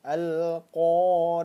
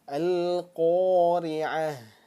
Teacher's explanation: jangan sampai dibacanya huruf ta tetapi dirubah menjadi huruf ha besar